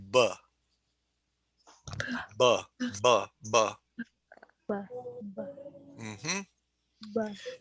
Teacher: you stop it with your lips